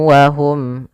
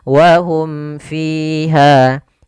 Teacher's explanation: Ah, di sini kembali salah penulisan bukan ikhfa syafawi tapi izhar syafawi. Jelas suara mimnya dan tidak boleh ditahan. Wahum fiha ya tidak boleh saktah juga misal wahum fiha enggak tapi dia langsung aja wahum fiha.